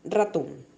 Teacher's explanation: La intensidad recae sobre ton